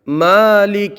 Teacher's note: میم کو ایک الف کھینچ کر کے پڑھیں گے، کھڑا زبر ہے، لام اور کاف دونوں متحرک ہیں، بغیر کھینچے بغیر جھٹکا دیے معروف پڑھیں گے۔